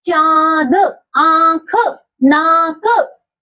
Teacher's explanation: अनुनासिक ध्वनियों के उच्चारण में हवा नाक और मुंह दोनों से निकलती है।